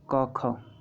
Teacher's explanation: निम्न में से कंठ ध्वनियाँ हैं क ख, जो कंठ से निकलती हैं